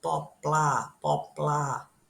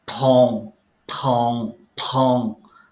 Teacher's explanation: a esquerda Poá que não tem aspiração nenhuma e a direita a gente vai ter uma aspiração